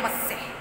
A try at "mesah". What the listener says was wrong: Mesah, jangan meseh. Mesah. Mesah, ya.